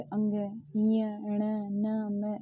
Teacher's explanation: इनका उच्चारण नासिका के साथ क्रमशः कंठ तालु मूर्धा, दांत और ओष्ठ के स्पर्श से होता है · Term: नासिक्य व्यंजन